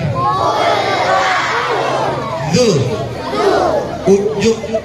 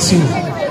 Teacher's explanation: Zu itu ujung lidah, bagian ujung lidah. Tempelkan di kedua gigi seri depan. Tidak boleh ada desisnya. Jangan bilang su, ya.